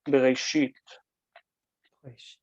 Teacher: aleph loses its consonantal structure, its its nature, and it becomes silent completely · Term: quiescent aleph